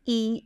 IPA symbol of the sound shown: i